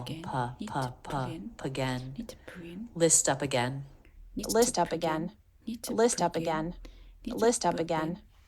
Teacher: into a beginning vowel up again P again P again so we release the P right into the vowel · everything smoothly connected all part of the same line of intonation no choppiness and no abrupt changes in Pitch